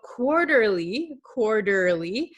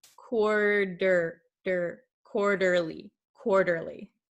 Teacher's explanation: in your country it might sound like an r but in english it sounds like a soft d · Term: flap t